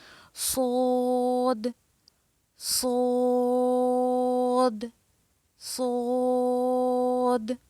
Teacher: صاد اور سین دونوں کا مخرج ایک ہی ہے، لیکن ایک کو سفریہ آواز میں پڑھا جاتا ہے یعنی سین کو، اور صاد کو موٹا کر کے